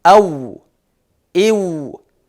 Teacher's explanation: Вау тамгасын айткан учурда эки эрин бири-бирине тийбестен тескеринче эриндер кууш болуп алдыга карай созулуп айтылат.